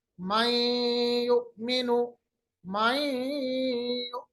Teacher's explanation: आवाज को हमने नून की आवाज को या के साथ मिलाया, इदगाम किया और गुन्ना भी किया। गुन्ने का मतलब होता है नाक के बासे में आवाज दे गए। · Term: इदगाम बागुन्ना